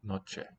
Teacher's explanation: This final vowel on noche sounds a bit lowered. Instead of E, the mouth's a bit more open as an E.